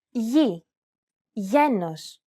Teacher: This letter is tricky because the pronunciation changes depending on the surrounding vowels. When it precedes an I or an E vowel, it's pronounced very much like an English Y sound.